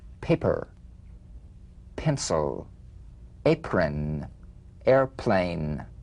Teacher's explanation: p is played with a light springing apart of the lips just like for the bee on the springing away feel a